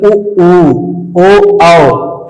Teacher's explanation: होता है ज पश्च स्वर का इस्तेमाल आप करेंगे तो जैसे इसका उच्चारण करने प जो जीव होता है वो पीछे की तरफ जाता है एकदम पीछे नहीं थोड़ा सा